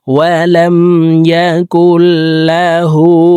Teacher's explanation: লাম জবর লা, হা উল্টা পেশ হু। হাকে ঠোঁট গোল করে একালিপ টেনে পড়তে হবে।